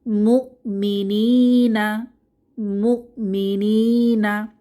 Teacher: মুমিনি এখানে ইয়ামাদ এসেছে এক আলিফ টেনে পড়বো